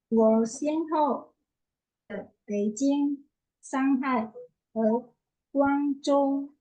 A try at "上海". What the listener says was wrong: Oke, nadanya aja ya, Bu. Yang lainnya udah oke. Shanghai.